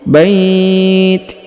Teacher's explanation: Kemudian diberikan hembusan tipis ya untuk huruf ti